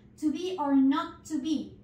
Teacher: Es tan sencillo como reemplazar la vocal O por la U en caso de to y la E por la I en caso de be